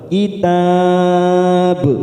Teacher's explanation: kitab kita panjangkan empat harakat dan ujungnya kita pantulkan karena terdapat huruf ba namanya Qalqalah Kubro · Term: qalqalah kubra